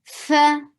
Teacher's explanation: Fa is short and give a flow of breath. Fa. Clear sound, clear flow of breath.